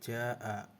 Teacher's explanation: Cara membacanya panjang 5 harokat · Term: mad wajib